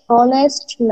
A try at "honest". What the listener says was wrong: হ না, অনেস্ট, অ, অ। অ। আপনি তো হচ্ছে মনে হয় ইয়া বলেন থাকেন তাই না, হ বলে থাকেন তাই না? এই যে হ বলাটা হচ্ছে ইয়া হবে।